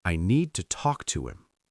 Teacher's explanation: Can you hear how to becomes very small, almost invisible? That is exactly what makes the sentence sound more natural. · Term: small words become weak